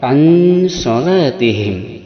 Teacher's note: ikhfa awsat pertengahan dari n dan eng yaitu eng mendekati n